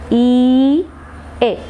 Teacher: You are raising the front part of the tongue towards the hard palate.